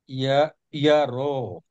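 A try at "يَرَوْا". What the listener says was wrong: এই যে ইয়া টান দিলে কিন্তু টান হয়ে যাচ্ছে, ইয়ার, ইয়ার মধ্যে কোনো টান হবে না, ইয়ার। হ্যাঁ, ইয়া, ইয়া বলে তারপরে র এর পরে টান দিবেন, ইয়ার।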